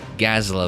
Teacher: the emphasis is on the first syllable so Gaza la would be more likely to be correct anyway